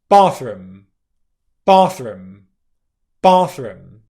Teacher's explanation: the consonant combination is split over two syllables, compared to if it was just one syllable